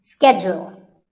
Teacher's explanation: It's not so much that it's mispronounced, it's just that it's said differently in the UK and in the US. In American English, this is schedule. The first syllable is ske and the second is jewel.